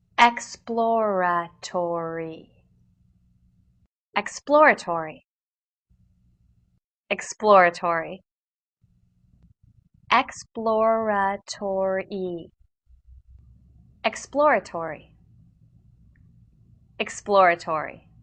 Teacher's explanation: it consists of a plosive p sound immediately followed by l and r sounds